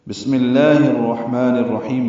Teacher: سین ساکن ہے، اس میں ہمس ہوتا ہے، میم کی زیر کی وجہ سے لام اس میں جرا باریک پڑھیں گے۔